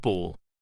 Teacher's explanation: B. Voiced bilabial plosive ball.